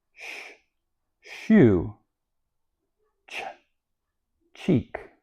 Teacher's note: For instance, place your fingers back on your throat and you can say sh. You don't feel the vibration with sh and you don't feel the vibration with ch. They're voiceless or unvoiced.